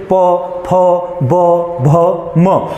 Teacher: प वर्ग ओ से क्या बना आपका ओष्ठ्य, यानी कि प वर्ग को बोलते टाइम पे आपके जो होंठ है वो आपस में क्या होंगे चिपकेंगे, आपस में क्या होंगे चिपकेंगे, जैसे प फ ब भ म।